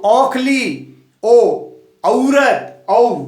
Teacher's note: अब देखो ओ और औ, औखली, ओ, औरत, औ, तो क्या हो गया, कंठोष्ठी, क्या हो गया ये, कंठ और ओष्ठ, जैसे औ, ओ यानी कंठ से आवाज निकल के ओष्ठ के साथ, दोनों का स्थान है कंठ और ओष्ठ, तो कंठोष्ठी बोलते हैं।